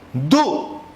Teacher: Suena más la U. ¿La U qué vocal es? Cerrada. Suena más que la abierta.